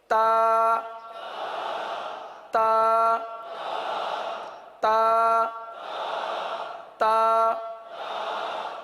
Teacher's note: اب تا کے اندر سختی ہے، ہر حرف کے اندر کچھ مخارج کی طرح کچھ صفات بھی ہوتی ہے نا، بعض حروف سخت ہوتے ہیں، بعض حروف نرم ہوتے ہیں، بعض پر ہوتے ہیں، بعض باریک ہوتے ہیں۔ تو تا کے اندر سختی ہے، شدت ہے، تو اس کو شدت کے ساتھ ادا کریں گے